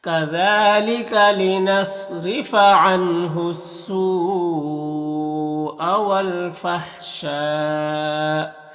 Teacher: نون ساکن کے بعد ہا ہے، حروف حلقی میں سے تو نون میں اظہار حقیقی ہوگا، نون کو ظاہر کر کے جلد پڑھیں گے · سو میں جو مد ہے مد متصل ہے، مد متصل کو 3 سے 4 الف کے برابر کھینچ کر پڑھتے ہیں۔